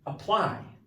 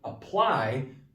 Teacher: But this, you're not aptly, you're apply because it's a verb with 2 syllables. So apply, the ply is the stressed part.